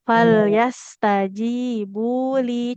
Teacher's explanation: lamnya dua harokat. Kasroh bertemu ya, panjang ya.